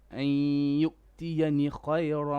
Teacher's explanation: Don't stretch the noon.